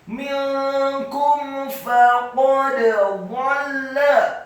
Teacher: Faqad, fa-nya dibaca fathah 1 harokat, qafnya dibaca tafkhim tebal, fathah 1 harokat, dan dalnya dibaca sukun serta wajib untuk diqalqalahkan